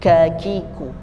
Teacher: kalau kaf itu sedikit ada kecapan, sedikit ada kecapan, ada hembusan, ada dorongan, ya. Jadi tidak betul-betul seperti ka pada umumnya kakiku, tapi sedikit ada dorongan sedikit kakiku.